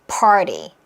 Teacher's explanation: 이때 T 사운드도 RT 모음 구조는 뭐가 가능하냐면 flap T 처리가 가능해서 리을 사운드로 나면 편해요. 그래서 우리가 party라고 할 수도 있지만 party 리리리리리자로 party 한국어 리을 리 party 이렇게 따로 하다가 점점 붙여볼게요.